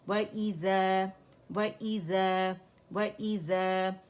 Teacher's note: وَإِذَا واو گولائی سے باریک ہے